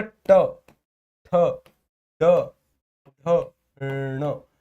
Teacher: जो हमारा ट वर्ग है वो मूर्धा के द्वारा उच्चारित होता है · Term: मूर्धन्य